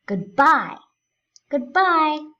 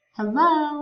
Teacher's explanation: We say good, we're not stressing anything, and then we really do stress the bye.